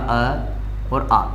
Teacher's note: कहाँ से बोला जाता है दोस्तों, कंठ से बोला जाता है